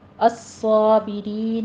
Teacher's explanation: الصابرین میں صاد کو مفخم پڑھتے ہوئے اوپر فتح قائمہ ادا کریں گے، صابرین نہیں ہے، صابرین، ہونٹوں کو پست رکھنا ہے، ٹھیک ہے، آگے 2 کاؤنٹ کیجئے، یا مدہ ہے۔